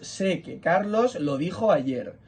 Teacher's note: sé como verbo es una palabra tónica suena con más fuerza